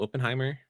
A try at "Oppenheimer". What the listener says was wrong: You're the only person I've heard that pronounced it with a long O sound.